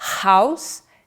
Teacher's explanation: Nos sons glotais, os músculos ligamentais da glote funcionam como articuladores ativos. A consoante h de house é glotal.